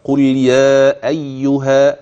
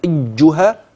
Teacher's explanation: الا القاف اللام ترقق من قل يا مرققه ايها الهمز مرقق الياء المشدده في اي لا تزد في التشديد فتخرج الياء عن كونها ياء مشدده